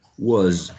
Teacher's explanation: Also remember that was has always z, okay? It's always voiced.